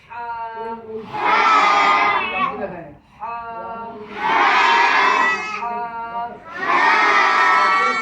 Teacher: হা উচ্চারণ হবে হলকের মধ্যখান থেকে